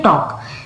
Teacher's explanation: टॉक में एल तो लगा है लेकिन एल की साउंड नहीं आ रही, देखो टॉक, टॉल्क तो नहीं बोल रही मैं, इसे क्या पढ़ते हैं टॉक।